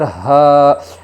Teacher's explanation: لام زبر لا، ہا الف زبر ہا، الف مدہ ہوگا، الف سے پہلے زبر ہے اس لیے الف مدہ ہوگا، الف مدہ کو ایک الف کی مقدار کھینچ کر پڑھے گے